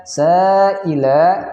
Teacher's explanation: sa'ila panjang 6 harokat karena dia ada mad tabi'i atau mad asli yang bertemu hamzah pada satu kalimat disebut dengan mad wajib muttasil, kita baca panjang 6 harokat.